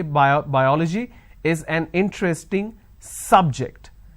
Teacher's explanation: I am stressing on the first syllable